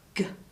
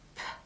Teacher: the G is green, G, because you use the voice box, whereas the P is black, P. That is only an air sound. You don't use your voice box.